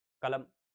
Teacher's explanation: क में भी अ, ल में भी अ, म में भी अ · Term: मध्यस्थ स्वर